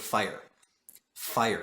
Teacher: you have this diphthong where the i er comes into it